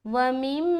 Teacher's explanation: व मीम मा, वाव ज़बर वा, मीम मीम ज़ेर मीम। यहाँ चूंकि मीम के ऊपर शद है तो गुन्ना करेंगे मीम मुशद्दद का